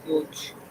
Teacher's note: Coach doesn't have a long O sound. It has a diphthong.